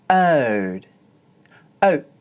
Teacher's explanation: in oat, the diphthong sounds short. That's because it's followed by an unvoiced consonant, the sound t. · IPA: /əʊ/